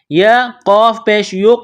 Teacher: یا کو قاف کے ساتھ ملانا ہے، قاف کو موٹا کرنا ہے، قاف حروف قلقلہ ہے تو یہاں قاف پر قلقلہ کریں گے